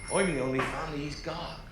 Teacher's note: So the first thing I'm going to focus on is the he. So for Hagrid and the West Country accent, sometimes we don't pronounce the he sound. And for Hagrid it's a little bit strange because sometimes he will pronounce the thing, and there are clips where you can hear him saying the H sound.